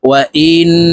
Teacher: ওয়াও জবর ওয়া, হামজাহ নুন জের ইন, ওয়াজিব গুন্না হরকতের বামে, নুনের উপরে তাসদিদ আছে, তাই এই হামজা নুনের সাথে গুন্নার সহিত পড়ব